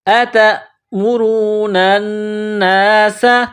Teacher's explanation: سین میں سیٹی کی آواز پیدا کرنا ہے، سین کو باریک کرنا ہے